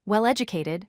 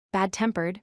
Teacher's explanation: Here, the stress falls on the participle or adjective that comes second. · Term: second word stress